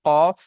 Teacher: জিভের গড়া হতে একটু আগে বাড়িয়ে সেই অংশটি উপরের তালুর সাথে লাগিয়ে উচ্চারণ হচ্ছে কাফ · জিভের গড়া উপরের তালুর সাথে লাগিয়ে উচ্চারণ হচ্ছে কফ